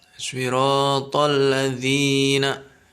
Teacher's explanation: Itu panjang hukum bacaannya cukup 1 alif saja. Siratal ladzina, 1 alif atau 2 ketukan. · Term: mad tabi'i